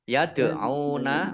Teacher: dal sukun bacaan kolkolah, ya, memantul, ditampakkan pantulannya. Yad'una ain domah wawu sukun mat tabi'i panjang 2 harokat.